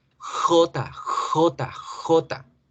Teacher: La J se nos va a colar acá en sonidos palatales porque en inglés el sonido de la J nunca va a ser acá en la garganta como lo hacemos en español o como lo hacemos en español. En español la J viene de la garganta.